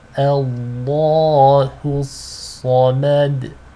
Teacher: The a hamza is light, but the lam here is heavy because it is preceded by a fatha. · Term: lam is heavy